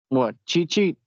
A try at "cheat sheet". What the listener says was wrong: It sounds like you're saying Chi-Chi. And I know what you mean, but the way it sounds.